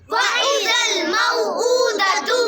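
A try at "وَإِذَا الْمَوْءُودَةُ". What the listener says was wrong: ٹھیک ہے الٹا پیش او کو لمبا کرنا ہے میم وا زبر مو نہیں لمبا کریں گے میم وا زبر مو جو ہم نے پیچھے پڑھی نا تختی لین کی تا وا زبر تو تا یا زبر تی اس کا ہے میم وا زبر مو میم یا زبر مئی اس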